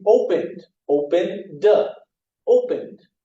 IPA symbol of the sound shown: d